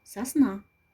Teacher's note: Ударный слог «на». Гласный звук в слоге «на» – ударный.